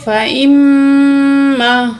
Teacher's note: غنہ کر کے پڑھیں گے، یعنی کہ ناک میں آواز لے جا کر ٹھہرائیں گے تقریباً 2 سیکنڈ۔ فا زبر فا، حمزہ زیر میم، ام میم الف زبر ما، فا ام ما۔